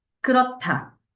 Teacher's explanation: 히읗과 디귿이 만나서 티귿으로 바뀌었죠